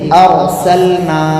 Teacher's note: را کے اوپر جزم ہے، اس سے پہلے زبر ہے تو را کو موٹا پڑھنا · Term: را ساکن